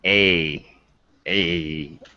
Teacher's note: look how tight my face muscles are it's a tense vowel